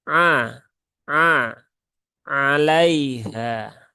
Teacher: huruf ain ya. A dia di tengah tenggorokan